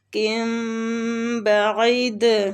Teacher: تو تنوین کے بعد با آ رہا ہے ادھر ہم اقلاب کریں گے